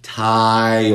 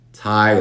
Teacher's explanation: Estamos levantando la parte trasera de la lengua. Estamos metiéndole una schwa y después una L. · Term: L oscura